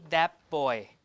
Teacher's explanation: instead of that the T becomes a p to match the place of articulation of B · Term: assimilation